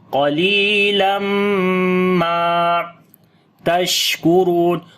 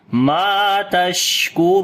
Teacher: On the sheen we make sifte hams quality, and also sifte tafashi. Ra we read in heavy sound, and also we long due to waw madda.